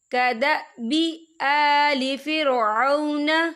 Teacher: آ کھڑی حرکات ہے تو ہم اسے 2 یا 3 حرکت کے برابر کھینچے پڑھیں گے